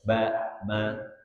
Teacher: Asyafatain, dua bibir. Apa saja dua bibir? Ba dan mim saja.